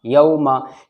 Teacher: واولین نرم آواز کے ساتھ جلدی پڑھا جاتا ہے